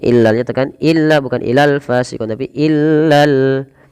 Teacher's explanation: Lam yang kedua dibaca dengan jelas karena di sini ada alif lam qamariyah. Itu alif lam yang ditulis dan dibaca dengan jelas.